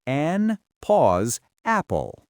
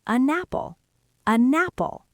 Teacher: A native speaker takes the N and pushes it onto the apple. So it actually sounds like you are saying a napple.